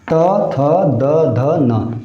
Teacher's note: त, थ, द, ध, न, ये पांचों व्यंजन क्या कर रहे हैं? ऊपर वाले दांत के पिछले वाले हिस्से को स्पर्श कर रहे हैं, इसलिए इसे क्या कहा गया? दंत व्यंजन।